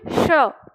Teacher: इस स का उच्चारण करो लेकिन दंत से नहीं तालु से करना है। आपकी जीवना तालु के नीचे होनी चाहिए।